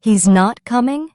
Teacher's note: Say it with the rising tone of a question.